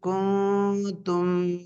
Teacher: இங்க சுக்குர் பெற்ற நூனுக்கு அடுத்து இஹ்ஃபாவுடைய எழுத்தான தா வந்திருக்கனால இந்த நூனை என்ன செய்ய வேண்டும்? தாவுடைய மஹ்ரஜுக்கு அருகில் சென்று குன்னா செய்யணும்